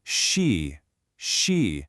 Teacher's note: For she, the English speaker's instinct is just to say she. But the Mandarin she sound is what we call retroflex. It just means your tongue should be curled back a little bit, lightly touching the roof of your mouth. It's not she, it's she, she.